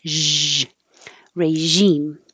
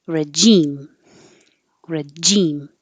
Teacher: You can say regime with a zh, which is sh, but with sound.